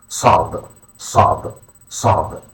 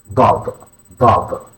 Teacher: an emphatic S with a deeper, more guttural sound